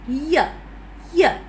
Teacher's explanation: the lips are spread there and the vocal cords are vibrating it's a sound but the the gap it's not so narrow